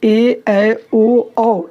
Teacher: जिनके उच्चारण में 2 मात्रा का समय लगेगा उन्हें दीर्घ स्वर कहते हैं